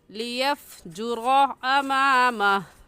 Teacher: लियफ़जुरा में लाम के ऊपर रा के ऊपर ज़बर है, तो इस रा को पूरी यानी मोटा करके पढ़ेंगे। और मोटा करने का तरीका कि आपके दोनों होंठ गोल हो जाए। ऐसे पढ़ेंगे, लियफ़जुरा अमामह।